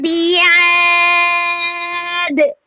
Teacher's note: تو یہاں پہ وقف کی صورت میں دال پر قلقلہ ہوگا، آواز کو پلٹنا ہے